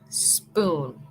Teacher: Queremos como un sonido bien fuerte de solamente la S, no la E con S, sino S.